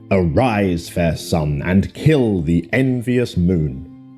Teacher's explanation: notice how the iambs cut across both punctuation and word separation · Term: iambic pentameter